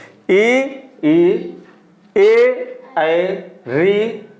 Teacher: जो स्वर जीभ के अग्रभाग से निकले, आगे के भाग से निकले, उन्हें हम अग्रस्वर कहते हैं।